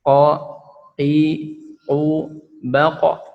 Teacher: Bedanya huruf qaf ini sifatnya tidak mengeluarkan nafas, dan yang kedua dia harus dihentakan karena syiddah. Syiddah itu harus ditekan ya.